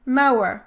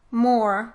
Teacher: The two vowels oh and aw are distinguished in the words more, which is one syllable, and mower, which is two syllables